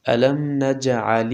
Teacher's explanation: ألم میم ساکن کې غنه نه کیږي ځکه د میم ساکن نه وروسته نه باشته او نه میم. نجعل الجیم کې قلقله کیږي معنا آواز پکې تنبیږي. د تنبیدلو حرف دی.